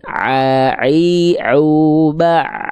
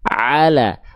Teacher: pastikan teman-teman melafalkan ain dari tengah tenggorokan. Kalau teman-teman ketika baca ayat, ya, misalnya di sini masih kedengaran kayak ala, maka teman-teman melafalkannya terlalu ke bawah, kurang naik.